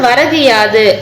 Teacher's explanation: முழுமையாக ஒரு மாத்திரை அளவில் ஒலிக்காமல் வந்து அரை மாத்திரை அளவு வந்து குறைந்து ஒலிக்கிறது. இப்படி ஒரு மாத்திரை அளவில் குறுகி ஒலிக்கும் இகரம் தான் வந்து என்னன்னு சொல்றாங்க, குற்றிய லிகரம் அப்படின்னு சொல்றாங்க.